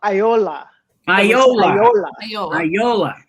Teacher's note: The stressor seems to fall on the final syllable, like on all of the names.